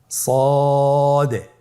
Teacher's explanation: জিহ্বার আগা, সামনের নিচের 2 দাঁতের পেট ও আগার সঙ্গে লাগিয়ে উচ্চারিত হয়।